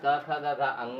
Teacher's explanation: जब कंठ से किया जाएगा कंठ के अंतर्गत क, ख, ग, घ, अंगा आता है और ह भी आता है